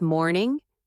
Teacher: the sound should go down gently, calm and smooth